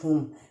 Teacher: ہا جو ہے حروف حلقی میں سے ہے اور اس کو ہم حلق کے نچلے حصے سے ادا کریں گے